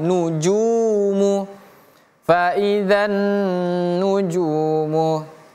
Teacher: junnya panjang dua harakat Ada huruf wau ee wau sukun setelahnya ya.